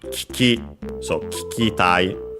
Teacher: usually you don't have two syllables, one following the other, especially with the vowel barely heard if at all. Between the two, I'd say the first I isn't is barely heard if at all.